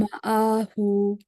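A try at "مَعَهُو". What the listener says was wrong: হুতে একটা টান হবে। মাআহু।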